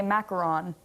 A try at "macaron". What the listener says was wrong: no, macaron, that's French. French, I think, in the language itself doesn't have an ooh sound. So it's macaron. And they're spelled differently.